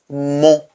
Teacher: my mouth is round and I produce the nasal sound using my nose